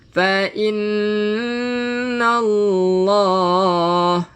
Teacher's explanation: Fa'inna, nun yang bersabdu. Jadi kena buat apa bila kata nun yang bersabdu? Kena dengung lah. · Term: wajib al-gunnah